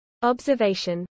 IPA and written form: ˌɒbzəvˈɛɪʃən (observation)